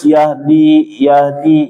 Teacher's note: Terakhir membaca huruf ha itu harus dialirkan ya. Seperti sebelum-sebelumnya ana sudah jelaskan H ini bacaannya dialirkan jangan sampai terputus.